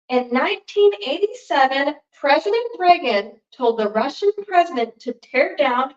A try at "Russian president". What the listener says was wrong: Do that again. You said present. Russian president.